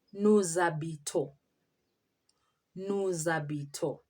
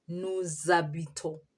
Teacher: We join the S and the H to form the sound Z. We call it liaison.